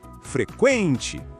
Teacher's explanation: Pronto, a sílaba tônica é quen.